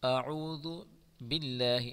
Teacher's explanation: اس اللہ کے نام کو باریک پڑھیں گے